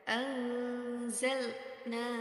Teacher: di situ terdapat nun sukun bertemu dengan huruf Za jadi harus dibaca dengung dan dengungnya itu dengan ee apa panjang hungnya yaitu dua harakat